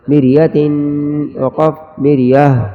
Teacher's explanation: وقف میں اس ہا کو جھٹکا نہیں دیں گے بلکہ آرام سے ظاہر ہوگی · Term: گول والی ہا